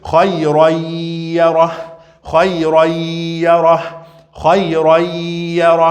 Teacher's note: esse tanwin, praticamente não vai ser pronunciado, porque ele vai ser substituído com som nasal